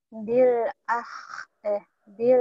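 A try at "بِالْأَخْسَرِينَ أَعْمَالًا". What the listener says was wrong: Kha. Akh. Jangan ke ha ya bu ya. Ke kho. Bil akh. Ha dan ho mirip-mirip. Kalau ha kan bersih. Bil ah. Ah. Ini akh.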